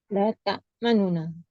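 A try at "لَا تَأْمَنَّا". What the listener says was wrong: Dengar tak saya sebut ada dhammah tadi tu. La ta'manunna. La ta'manunna. La ta'manunna. Nu tu pendek 1/3 harakat. La ta'manunna. La ta'manunna. bacaan yang 1/3 harakat tu nama dia raum. Ini bacaan pertama. Kalau ikutkan dia yang patut dibaca, raum.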